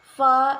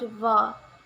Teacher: The sound fa is a voiceless labiodental fricative sound, and the sound va is a voiced labiodental fricative sound.